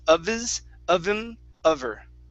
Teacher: And you drop the H, and it's of his, of him, of her.